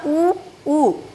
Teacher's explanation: मैंने ओष्ठ की प्रकृति के आधार पर आपको बोला था, ओष्ठ गोलाकार हो जाते हैं, ठीक है। ऊ होठ हमारे बाहर को आ रहे हैं